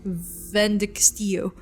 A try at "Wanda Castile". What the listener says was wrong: Wanda Castile. Not Castillo, it's not Spanish. Wanda Castile.